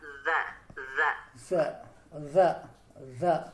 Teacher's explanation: Cara membacanya sama seperti huruf sa, yaitu ujung lidah kita gigit, tapi tidak sepanjang atau sebesar huruf sa. Sedikit kayak ditempelkan saja Pak. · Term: huruf zal